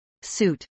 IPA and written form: suːt (suit)